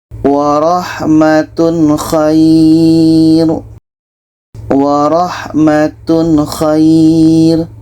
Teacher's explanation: Tanwin jelas, kha jelas dan tidak ada dengung. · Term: izhar halqi